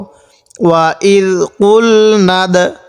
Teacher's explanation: ওয়া ইদ কুল নাদ, এই দালটা হলো কলকলার হরফ, আর কলকলার হরফ হলো 5টি, কফ তো বা জিম দাল। তাহলে এই দালটাতে একটু ধাক্কা দিয়ে পড়ব